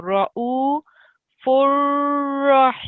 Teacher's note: Okay, this is ra'u, that's a u first. And then because this ra has a tashdid on it, you have to sit on it for 2 seconds. So ra'u furrahimun.